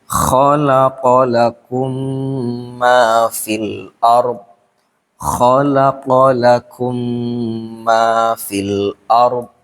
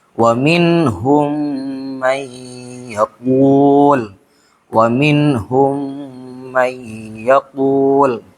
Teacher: bunyinya langsung dimasukkan ke huruf mimnya, maksudnya mim yang kedua. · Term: idgham mislen